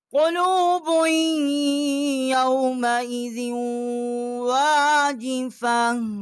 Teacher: با کو ہم نے یا کے ساتھ مشدد کیا ہے، یہاں ہم نے غنہ بھی کیا ہے، اور زال کے نیچے دو زیریں ہیں، واؤ کے ساتھ مشدد کیا ہے اور یہاں غنہ بھی کیا ہے۔